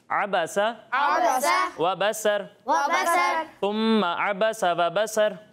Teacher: आइन की अदायगी बिल्कुल वाज़ेह होनी चाहिए, हमज़ा की तरह नहीं लगना चाहिए